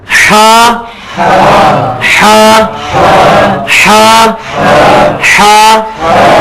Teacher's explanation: جو حلوائی والی ہے نا, اس کو وسط حلق سے نکالنا ہے, حلق کے درمیان سے